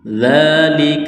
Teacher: ذال کو پڑھتے وقت زبان تھوڑی سی باہر نکالنی ہے۔ ذال کے اوپر کڑا زبر ہے تو ایک الف کے برابر اس کو کھینچنا ہے۔